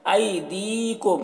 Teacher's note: ऐदीकुम, यहाँ पर आई में जो या है ये या लीन है, इसे नर्म आवाज़ के साथ जल्द पढ़ना है। और दी में जो या है ये या मद्दा है, इसे एक अलिफ के बराबर खींच कर पढ़ना है · और दी में जो या है ये या मद्दा है, इसे एक अलिफ के बराबर खींच कर पढ़ना है। और मीम जो है यहाँ पर इजहार शफवी हो रहा है, इसे जल्द पढ़ना है